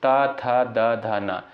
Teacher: जिन वर्णों के उच्चारण में जीहवा ऊपरी दांतों को स्पर्श करती है उसे जो है दंत वर्ण कहा जाता है